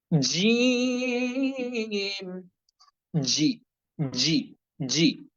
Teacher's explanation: বরাবর জিহ্বার মধ্যখান উপরের তালুর সঙ্গে লাগিয়ে শক্তভাবে জিম অক্ষরটি উচ্চারণ করার চেষ্টা করেন